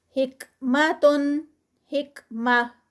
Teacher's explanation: جب یہ تا رکتی ہے گولتا تو ہا کی ساؤنڈ آتی ہے